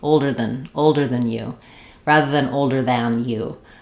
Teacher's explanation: we use this reduced a sound with a more closed mouth · It's more of older than, almost no vowel, very reduced, or if it gets reduced, it can kind of sound like the eh vowel of then